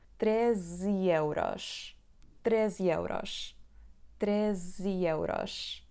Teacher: A palavra está acentuada na penúltima sílaba, então 13, 13, 13, 13, 13. Agora, quando juntamos 13 e euros, a última letra E da palavra 13 vai ser pronunciada I.